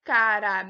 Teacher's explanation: A gente percebe que o me é a sílaba tônica, ou seja, a penúltima.